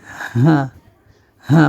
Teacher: গলার ভিতর থেকে এটা হবে হা অর্থাৎ মনে হবে যেন পেটের ভিতর থেকে আসছে শব্দটা উচ্চারণটি হবে হা অর্থাৎ হাত বলি বা হ দিয়ে যে সকল